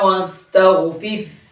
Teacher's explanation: ফির এখানে শেষে একটা ছোট হা আছে, নরমের সাথে হাটা উচ্চারণে আনতেই হবে, নইলে কিন্তু অর্থ চেঞ্জ হয়ে যাবে।